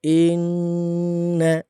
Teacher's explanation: نون مشدد ہے تو نون میں غنہ ہوگا ہر حال میں، اور سختی بھی ہوگی